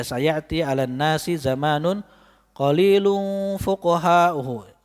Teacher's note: Contoh tadi ayat hadis sayati 'alan nasi zaman. Jadi nunnya enggak gunnah karena ini hadis.